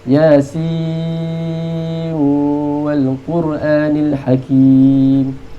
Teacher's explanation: Dia idgham pada nun dan waw.